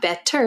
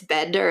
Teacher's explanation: Americans often change T's to DS in words that are using a vowel like the word better I want to speak English better that's not better it's better